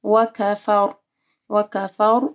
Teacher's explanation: یہاں پہ رو موٹی پڑھی جائے گی کیونکہ فا جو ہے اس کے اوپر زبر ہے